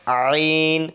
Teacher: এরপরে আইন, আইন চাপ দিয়ে পড়তে হবে, আইন উচ্চারণ হয় জিভ হলকের মধ্যখান থেকে